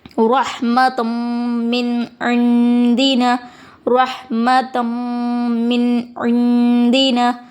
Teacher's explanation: دیکھیں نون ساکن کے بعد دال آیا ہے، حرف اخوا کا حروف ہے، یہاں نون کی آواز کو ناک میں چھپا کر پڑھیں گے، اخفا ہوگا